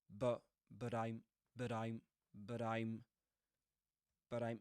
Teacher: but is pronounced with a schwa, you know, that's the weak form in connected speech